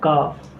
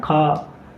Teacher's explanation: अघोष अल्प प्राण क्या है, का, अघोष महाप्राण खा